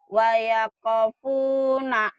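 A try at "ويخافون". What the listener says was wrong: panjang. Ho-nya panjang. Wayaku aja. Wayako.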